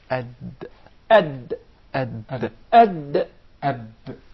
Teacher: The Dal is pronounced from the top side of the tip of the tongue and the gum line of the two front upper incisors.